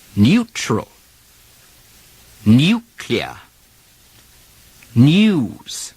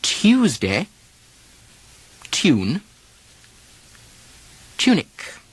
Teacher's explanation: Okay, let's look at one more occasional vowel pronunciation, which isn't totally foreign to American speech, but the English are far more likely to use it than Americans. It's the use of the y glide before the vowel oo in many situations where the oo is not spelled with the double O letters